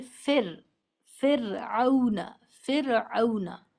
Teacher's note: कहते हैं जिस पर जजम हो अगर रा साकिन है या रा जजम के साथ उससे पहले जेर है तो फिर रा को हम बारीक पढ़ेंगे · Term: बारीक रा